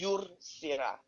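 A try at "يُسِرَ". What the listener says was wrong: Correct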